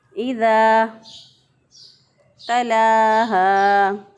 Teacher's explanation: लाम खड़ी ज़बर ला, एक अलिफ के बराबर इसको भी लंबा किया।